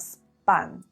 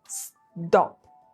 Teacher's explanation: they're unaspirated, which means there's no puff of air when we say them